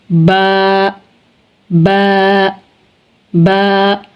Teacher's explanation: با، با دونوں ہونٹوں کی اندرونی تری سے، ہمارے ہونٹوں کا جو اندرونی حصہ ہے، تری والا حصہ، با ادا ہوتا ہے، با، با، با۔ اندرونی تری والے دونوں حصے جب آپس میں ملتے ہیں تو با ادا ہوتا ہے